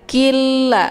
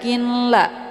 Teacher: huruf nun sukunnya dimasukkan ke dalam huruf lam ataupun dileburkan dengan cara ditekan, dan masuknya adalah kamil secara sempurna tanpa tersisa bunyi nunnya. Killa, ya, jadi bukan dibaca kinla tapi killa, masuknya kamil. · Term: idgham bila gunnah